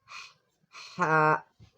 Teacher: The sound comes from the middle of the throat.